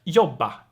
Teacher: in the present tense, it's very common for R to disappear